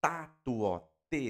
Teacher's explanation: Nós temos a ponta da língua no dente e ao restante da língua na na parte do o céu da boca, que é o alvéolo que nós chamamos, né?